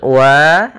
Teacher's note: ada fathha bertemu Alif yaitu Mad thii panjangnya dua harakat